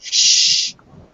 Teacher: That's a sound that you don't use your vocal cords for, just air, like S's and F. Voiceless TH, SH sound. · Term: voiceless sound